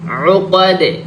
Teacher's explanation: আইন গলার থেকে বের করব, গলার মাঝখান থেকে।